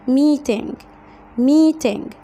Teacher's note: لما يبقى عندي حرف الان وراها جي بنطلعها من الانف يعني زي شبه الغنة في القرآن الكريم، فنقول meeting.